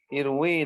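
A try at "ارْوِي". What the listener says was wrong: Ya, pakai ya, panjang irwi.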